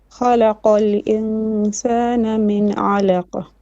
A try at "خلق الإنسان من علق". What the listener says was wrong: So you have hams after qaf again.